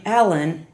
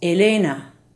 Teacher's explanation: the short e in English is very light but in Spanish the mouth is open wider